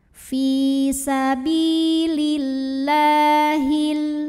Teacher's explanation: karena ada baris fathah tegak di atas huruf lam cara membacanya panjang lamnya ini dua harakat saja